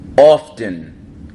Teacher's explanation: notice with the often, we pronounce the T